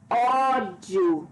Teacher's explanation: Dissílaba. E é paroxítona porque a penúltima sílaba é a mais forte.